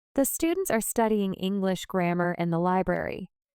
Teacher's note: The stressed words are students studying English grammar and library. The unstressed words they are in and the are said quickly and smoothly. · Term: sentence stress